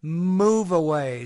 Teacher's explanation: the last sound here the V it links to the first sound of the next word